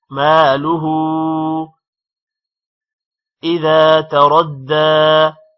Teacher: مالہ اذا تردى، ذال کے بعد الف ہے، ذا کو تھوڑا لمبا کریں گے. تردى، رو موٹا ہوگا، دال کے ساتھ ملے گا رو، کیونکہ دال پر شد ہے اور دال پر کھڑی زبر ہے، دال تھوڑا لمبا بھی ہوگا.